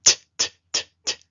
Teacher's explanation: The letter TET makes a dental sound pronounced as /t/